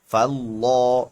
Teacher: لفظ اللہ سے پہلے زبر ہے اس لیے لفظ اللہ موٹا ہوگا